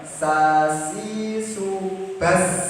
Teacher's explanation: desisnya ditambahin, Snya ditambahin bas. Nah, gitu. Jadi biar agak lamain dikit.